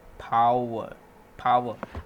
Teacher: r is a bit silent over here